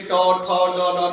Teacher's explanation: कौन कौन बोला जाता है तो आप बोल के देखिए ट ठ ड ड, दांत के बगल वाला मांस में जीव टकराता है, तो ये ट ठ ड हो गया। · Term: मूर्धन्य